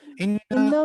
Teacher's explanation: انا میں نون مشدد ہے، یہ غنہ کریں گے اس کو